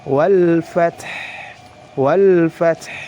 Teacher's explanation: Jadi dialirkan, jangan sampai huruf ha-nya hilang, ya. Karena huruf ha ini berada di akhir kata dan dalam keadaan waqaf, sifatnya harus diperhatikan. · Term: sifat rakhawah